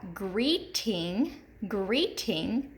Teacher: In the first syllable, we have greeting. Greeting, that long E is accented in the first syllable in greeting